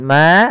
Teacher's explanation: fathah bertemu Alif panjangnya dua harakat